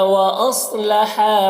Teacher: صاد کو پر پڑھنا ہے، حروف مستعلیہ میں سے ہے، اور ہا میں الف مدہ ہے، اسے ایک الف کے برابر کھینچ کر پڑھیں گے۔